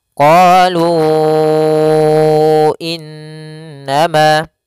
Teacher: lu panjangkan dulu 4 harokat. Kemudian pelafal innama, di sini ada bacaan gunnah, yaitu in. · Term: munfasil